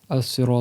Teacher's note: Mais comme il y a un ra et un ta, qui sont des lettres emphatiques, pour qu'il y ait une concordance dans les lettres, tu as le droit de le réciter avec un sad, qui est un S plus emphatique que le S normal